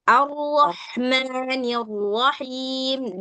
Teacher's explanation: Bukan arrah, bukan begitu. Nah, jadi takrirnya tetap dapat, cuman dia nggak sampai bergetar terlalu banyak kayak roh bahasa Indonesia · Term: Roh tafkhim